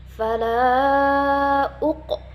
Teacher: maka dibacanya qalqalah sugoro atau qalqalah kecil. Dia mantul tetapi tidak mantul banget.